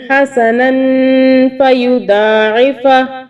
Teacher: ہم نے اخفا کیا، غنہ کیا نون پہ کہ نون کے اوپر 2 زبر ہے اس لیے، اور آگے ہم نے فا کا اس کے آگے حرف ہے جو کہ اخفا کا ہے تو یہاں بھی ہم نے غنہ کیا.